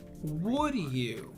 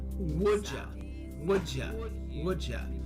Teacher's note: The D sound in would and the Y sound in you blend, creating a J sound. Would you becomes would ya.